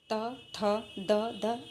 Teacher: दांतों पर जीभ लगाकर उच्चारण वाली ध्वनि